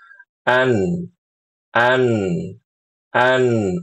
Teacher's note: dari ujung lidah nempel ke langit-langit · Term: huruf nun